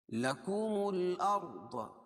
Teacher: ضاد کو موٹا پڑھیں گے کیونکہ حروف مستعلیہ میں ہے